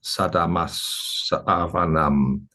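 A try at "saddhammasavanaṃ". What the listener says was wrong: Okay, that wasn't too bad, but there's a little bit more emphasis we need on the doubled vowels. Saddhamma savanam.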